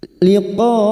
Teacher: Liqo bertemunya mad dengan hamzah dalam satu kalimat mad wajib muttasil. Mad wajib muttasil lima harakat kita panjangkan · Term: mad wajib mutasil